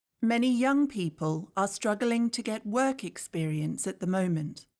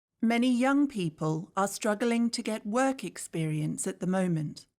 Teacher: These are the parts said a little bit louder or longer. Notice how the words young, struggling, work, and moment are all stressed. These words help the natural rhythm of the sentence.